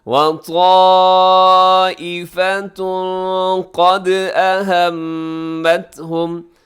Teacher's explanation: وطائفة کے آخر میں تنوین ہے، تنوین کے بعد قاف ہے تو یہاں اخفا کریں گے